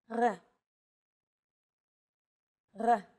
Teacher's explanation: It's actually closer to the German or French R, but without the roll. · It's often written as an R, but don't be fooled. This letter is pronounced differently than an English R. It's pronounced at the back of the throat instead of forward in the mouth.